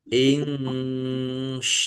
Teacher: nun sukun bertemu dengan huruf syin bacaan ikhfa dibaca samarsamar. Sin fathah alif mad thobi'i.